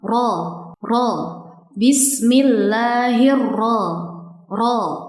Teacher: terdapat huruf ro yang bertasydid sekaligus berfathah sehingga dibaca tebal atau tafkhim seperti ini.